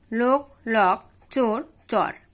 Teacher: দুই নাম্বার ওকার অকারে পরিণত হয়